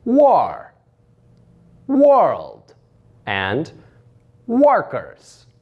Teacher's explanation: you use the sound ah like in the beginning of the word all and you take that sound and elongate it · you take that ah sound and elongate it. This is illustrated using the semicolon following the symbol for the sound ah.